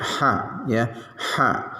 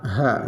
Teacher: Ha kecil itu ada di tenggorokan, ha ya, ha. Kalau ha besar adanya di dada, ha ya, dalam.